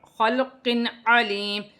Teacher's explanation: 2 زیر کی تنوین میں غنہ نہیں ہوگا کیونکہ عین حروف حلقی میں سے حلق سے ادا ہوگا